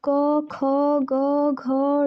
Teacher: क, ख, ग, घ, ड़, ह ये गले से निकलता है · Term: कंठ